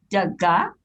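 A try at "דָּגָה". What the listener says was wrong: Daga, good.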